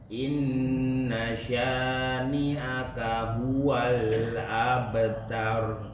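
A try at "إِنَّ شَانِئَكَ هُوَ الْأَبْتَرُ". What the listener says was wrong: Masih kurang. Abtar. Begitu. Masih tipis. Biar bacaan roknya yang mana yang tebal, yang mana yang tipis, bisa dibedain. Kalau misalnya bacaannya didahului oleh harokat kasroh, itu baru tipis. Tapi kalau dia didahului harokat fathah dan dhamma, maka tebal.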